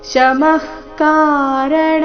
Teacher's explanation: ವಿಸರ್ಗ ಇಲ್ಲಿ ಅರ್ಧ ಖ ರೀತಿ